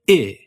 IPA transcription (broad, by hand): ɪ